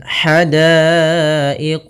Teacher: ha kecil halus dari tengah tenggorokan kita